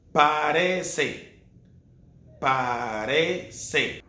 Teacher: when the letter C is before E and before I, in Latin America, it sounds like an S, like a silent S.